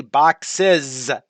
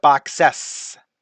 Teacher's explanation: So in the word sand, that S, that symbol S, makes a S sound, makes an S sound. But in the word boxes, the S there doesn't make an S sound, it makes a Z sound.